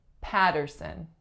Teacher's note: three syllables the strongest is again the first the first vowel sound we have is ah then we have